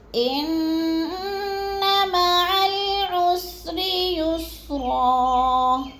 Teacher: ان کی نون مشدد ہے، سختی سے جمعوں کے ساتھ ہم نے پڑھنا اور لمبا بھی نہیں کرنا